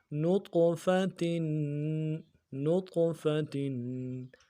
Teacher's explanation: تا دو زیر تن، تنوین ہے غنہ کریں گے